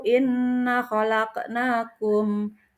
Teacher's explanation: bacaan gunnah, yaitu mendengung dengan 2 harakat